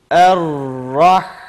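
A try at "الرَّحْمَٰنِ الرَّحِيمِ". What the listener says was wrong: Er diyemiyoruz. Er diye giriyoruz. Ve harfi akıtarak okuyoruz. Er-Rah'ın sıfatlarının birisi de rihvedir. Rihve akmak demektir.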